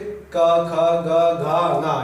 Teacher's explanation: कंठ से क ख ग घ ङ यानी कि क वर्ग में आते हैं, वो कंठ से बोले जाते हैं